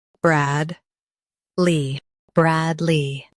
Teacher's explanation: Stress Brad and keep Lee smooth.